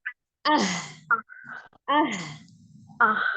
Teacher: Baca tenggorokan bagian bawah ya